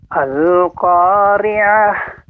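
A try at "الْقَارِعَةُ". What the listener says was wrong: Bapak, untuk pengucapan ri ini masih agak terdengar lebih banyak getaran ya. Dikurangi lagi getarannya.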